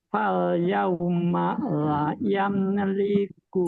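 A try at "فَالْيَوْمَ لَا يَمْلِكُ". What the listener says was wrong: Fal yauma la, lamnya yang panjang.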